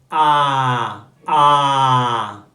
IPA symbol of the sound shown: ɑː